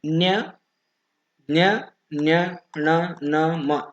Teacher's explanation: ಮೂಗಿನ ಸಹಾಯದಿಂದ ಉದ್ಭವವಾಗುವ ವರ್ಣಗಳು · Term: ಅನುನಾಸಿಕ